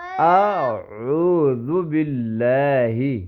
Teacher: عین کو گلے کے درمیان سے پڑھیں گے، اور الف کو سمپل پڑھیں گے، گلے کے درمیان سے نہیں پڑھیں گے.